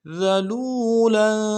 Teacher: ذا کو باریک ادا کرنا ہے، لام کو واو کے ساتھ ملائیں گے، واو مدہ ایک علم دار میں کھینچیں گے۔